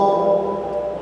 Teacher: to itu sendiri tempatnya dari ujung lidah dengan pangkal gigi atas depan ya. Satu makhraj dengan dal dan ta.